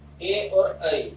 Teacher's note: ए और ऐ इन दो वर्णों का ही उच्चारण इस कंठ तालु उच्चारण स्थान से होता है